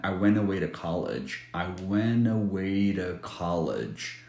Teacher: two can sound like ra, which is basically flap T sound plus a schwa sound.